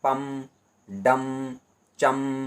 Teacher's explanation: अनुस्वार का उच्चारण स्थान नासिका है